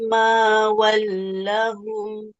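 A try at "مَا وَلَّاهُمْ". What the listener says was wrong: Mawalla. Alamnya panjang. Ada alif kecilnya. Mawallahum.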